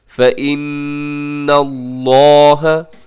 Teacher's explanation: لفظ اللہ کو آپ پر پڑھیے گا کیونکہ لفظ اللہ سے پہلے نون کے اوپر زبر ہے۔ پر کا مطلب یہ ہوتا ہے کہ آپ اسے موٹا پڑھیے گا۔